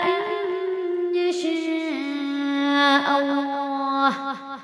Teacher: نون ساکن کے بعد یا حروف ادغام میں سے غنہ کے ساتھ ملا کر پڑھیں گے، شاء پہ مد کھینچیں گے۔